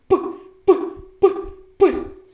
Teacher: його вимовляємо наші губи зімкнуті а потім відкриваються миттєвим видихом повітря покладіть руку на горло працює коли вимовляємо звук п горло наше ні знаце про це звук глухий · коли ми його вимовляємо наші губи зімкнуті а потім відкриваються миттєвим видихом повітря